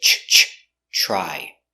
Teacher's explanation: You have TR. TR together, it makes the ch sound like chicken